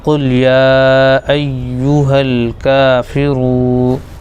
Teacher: را کو واو میں ملائیں گے، اور دوسرا اس میں یہ ہے کہ واو مدہ ہو جائے گا